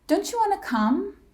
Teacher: when T followed by ya, it creates the CH sound, the ch. Don't you want to come?